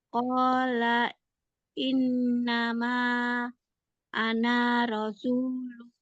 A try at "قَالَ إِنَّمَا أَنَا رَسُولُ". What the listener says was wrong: Ananya nggak boleh panjang. Nah, Mbak kalau jumpa yang ini, bulat kayak gini, itu nggak panjang. Itu maksudnya meniadakan fungsi alif.